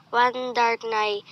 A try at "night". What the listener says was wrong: The learner mispronounced the word night as nai.